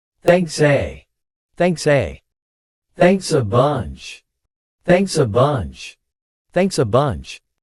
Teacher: A very important pronunciation point you need to pay attention to here is the th sound in thanks, thanks, thanks, and the two words thanks and a are also linked together